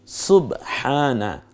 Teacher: হকে আকার দিন, আকার দেয়া হয়েছে হচ্ছে খাড়া আকার, এর মানে খাড়া জবর, হটা গলার মধ্যে চাপ দিয়ে বলুন, হক আদায় হবে। আর আকারটা খাড়া হওয়ার কারণে একালিপ টেনে বলুন হ্যাঁ।